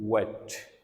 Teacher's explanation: तो इसलिए इसकी प्लेस ऑफ आर्टिकुलेशन जो है डबल है, ठीक है। बोथ द लिप्स जो है वो इन्वॉल्व है इसके अंदर, और secondly it's also palatal, bilabial and palatal